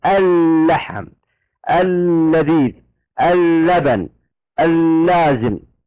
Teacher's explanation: ننطقها في الكلمه تنطق لاما واحده مشدده